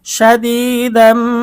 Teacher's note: ঈদগামে বাগুন্না নুন সাকিন ও তানভিনের পরে ঈদগামে বাগুন্নার 4 হরফের কোনো একটি হরফ আসিলে তখন ওই নুন সাকিন বা তানভিনকে গুন্নাহের সহিত মিলিয়ে পড়িতে হয়। এখানে তানভিনের পরে ঈদগামে বাগুন্নার হরফ মিম এসেছে, এই জন্য আমরা গুন্না সহ মিলিয়ে পড়ব।